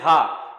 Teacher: हा में आप देखोगे कि कहीं पर भी कोई रुकावट नहीं आ रही है, सीधी साउंड कहां से आ रही है, गले से आ रही है, तो इसलिए ये क्या है, कंठ है। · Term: कंठ्य